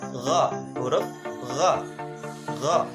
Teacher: ujung tenggorokan yang paling dekat dengan lidah. Sifatnya nafas ditahan atau jahar, lunak, dan suara tidak tertahan, rohoa. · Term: isti'la